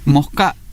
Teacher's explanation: Y en la zona rural, esa aspiración de ese final incluso es la sustitución del sonido del fonema correspondiente a la letra S por un sonido más bien parecido a lo que se produciría cuando producimos el sonido de la letra J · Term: aspiración de la S